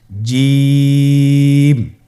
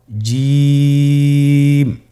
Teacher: জিম হরফটি বারিক হরফ এটা উচ্চারণ করতে হবে তিন আলিফ টেনে